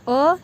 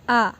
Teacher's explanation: अ short time लगा, आ थोड़ा सा लॉन्ग टाइम लगा